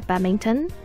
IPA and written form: ˈbædˌmɪntṇ (badminton)